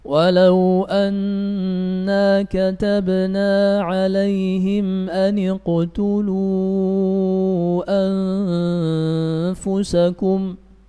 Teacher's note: hamzanya tidak dibaca. Kenapa? Karena berada di tengah kalimat. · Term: hamzatul wasl